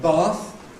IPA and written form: bɑːθ (bath)